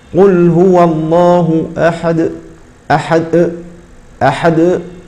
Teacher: ختم صوت هذه القلقله بهمزه · الخطأ الثاني وهو ختم صوتها بهمزة، ختم صوت هذه القلقلة بهمزة